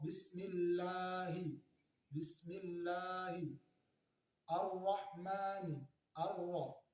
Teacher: Contoh, bismillahi, bismillahi, ar-rahmani, ar-ra, yaitu ada alif lam, kemudian di situ ada ro, tapi alif lamnya tidak kelihatan saat dibaca. Tidak boleh dibaca al-ro, al-rahman, tapi harus melebur ke huruf selanjutnya. Itulah yang dinamakan dengan alif lam syamsiyah.